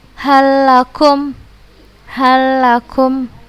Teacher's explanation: Karena langsung kita masukkan ke huruf yang bertasydidnya. Huruf lamnya nggak kita baca lagi, karena idgham kamil, kita memasukkan secara sempurna ke huruf yang bertasydidnya